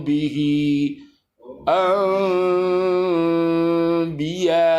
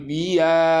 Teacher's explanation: Ba, tapi tidak dirapatkan. Kalau dirapatkan itu yang membentuk mim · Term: ikhfa syafawi